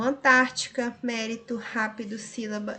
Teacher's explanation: São as palavras que têm a antepenúltima sílaba como a tônica, ou seja, a mais forte. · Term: proparoxítonas